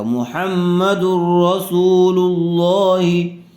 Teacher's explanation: حاضر ہی محمد الرسول اللہ، تو یہاں ادغام را کا قاعدہ ہو رہا ہے، اس لیے کہ تنوین کے بعد حروف یرملون میں سے را آئی ہوئی ہے، اس لیے اس کو بغیر غننے کے ملا کر پڑھیں گے، یعنی تنوین کو، دال کو را سے ملا دیں گے لیکن غنہ نہیں کریں گے، یہ بغیر غننے کے پڑھا جائے گا